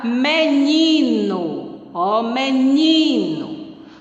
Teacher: a sílaba mais tônica é o ni, a sílaba mais forte é o ni